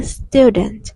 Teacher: Student chúng ta sẽ chú ý bật âm t ở cuối, bật âm nhẹ.